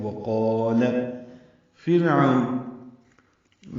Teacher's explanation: را ساکن سے پہلے فا کے نیچے زیر آنے کی وجہ سے را باریک ہے ، عو وہ لین ہے، ہونٹ آگے کی جانب لائیں گے،